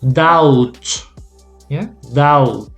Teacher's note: So you pronounce the T, but not the B.